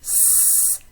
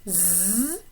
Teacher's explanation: These would be voiceless and voiced alveolar fricatives, because the tip of my tongue is coming pretty close to the alveolar ridge, but is not blocking the air completely. It creates friction.